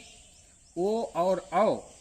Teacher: ओ और औ कंठ और ओष्ठ दोनों से बोले जाते हैं। ओ औ के लिए कंठ, गला और ओठ दोनों का प्रयोग करना पड़ता है। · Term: कंठोष्ठौ